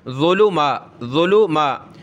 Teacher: میم پہ کھڑا زبر، ایک الف کی لمٹ میں کھینچیں گے